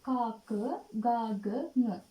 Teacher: උගුරෙන් උපන් අක්ෂර කියවනකොට උගුර උපකාර වෙනවා උච්චාරණය කරනකොට. කා, ක, ගා, ග, ङ උගුර උදව් වෙන නිසා තමයි කණ්ඨජ කියන්නේ.